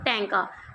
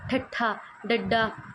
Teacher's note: ਇਹਨਾਂ ਧੁਨੀਆਂ ਦੇ ਉਚਾਰਨ ਸਮੇਂ ਜਿਹੜੀ ਜੀਭ ਹ ਉਹ ਉਲਟੀ ਹੋ ਕੇ ਕਠੋਰ ਤਾਲੂ ਨਾਲ ਲੱਗਦੀ ਹ · जिवें तुसीं प्रोनाउंस करके देखो, बोल के देखो टैंका, तुहानूं महसूस होगा भी तुहाडी जीभ उल्टी होकर फिर टच कर रही है तालू नूं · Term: ਉਲਟਜੀਭੀ, उल्ट जीभी